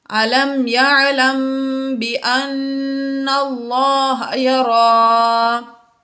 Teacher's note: میم ساکن کے بعد با آ گیا اس لیے یہاں پر بھی ہم نے غنہ کیا